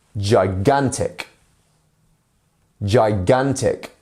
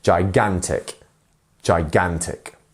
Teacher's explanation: our stress syllable here is the middle one here